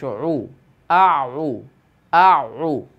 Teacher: একটু হলকের মাঝখান থেকে বের করার চেষ্টা করব ঠিক হলকের মাঝখান থেকে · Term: আইনের উচ্চারণ